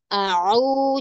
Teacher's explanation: Huruf ain, makhrajnya ditekan au, jangan jangan seperti hamzah. Au, ya. Au, auzu.